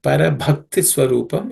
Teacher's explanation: The Bha is the fourth letter in the Pa Varga, Pa class. It has to be aspirated. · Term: aspirated consonant